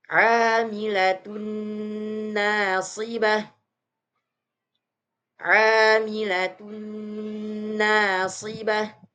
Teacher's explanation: Suara tanwinnya dimasukkan ke suara huruf nunnya.